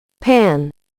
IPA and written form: pæn (Pan)